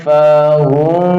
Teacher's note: memasukkan mim, bunyi mim sukun ke dalam mim berikutnya, idgham mimmi ya